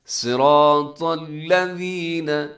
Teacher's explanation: صاد موٹا ہے، را موٹا ہے، طا موٹا ہے، صراط الذین، الذین میں اس کا خیال کرنے سے اکثر لوگ الذین کر دیتے ہیں، تو الذین نرمی کے ساتھ پڑھنا ہے آپ نے، سیٹی نہ ہو۔